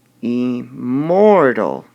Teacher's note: the part of the word that we would stress would be the mort part immortal so we would designate this e more tall our next